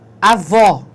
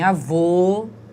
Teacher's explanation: em avó o som é aberto entretanto em avô o som é fechado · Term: som aberto